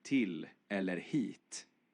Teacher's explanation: Om jag pratar som någon från Stockholm så blir i-ljuden lite mer nasala. Det märks i ord som till eller hit.